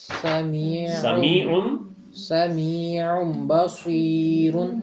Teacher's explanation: تو تنوین وہی آپ نے فارمولا جہاں نون آئے گا وہاں آپ نے اس کے اوپر اس کے فوراً بعد اگر بے آ رہا ہو تو آپ نے اس کو نون کی آواز کو ختم کر کے تو آگے بے کے ساتھ مل جانا ہے